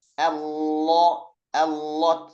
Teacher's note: kalau yang lam ini berbeloknya ke arah makhraj huruf nun. Apalagi kalau kita mengucapkan huruf lam pada lafzul jalalah yang tebal.